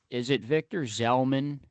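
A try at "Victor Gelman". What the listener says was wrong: No. With a G. No Z. I mean, I don't know how to pronounce it, but there's no Z.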